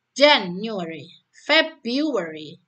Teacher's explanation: Januari dan Februari ini bisa menggunakan pola ditekankan pada silabel awal ya.